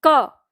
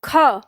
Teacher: क की तुलना में ख बोलने में ज्यादा हवा लगती है